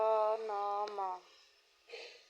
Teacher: नासिक्य वर्ण, जिन वर्णों का उच्चारण मुंह और नाक दोनों से होता है उन्हें नासिक्य वर्ण कहते हैं।